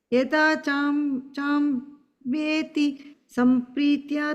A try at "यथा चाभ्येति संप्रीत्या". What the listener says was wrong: Only on the second line, second word, ib, bha sound, chabhyeti.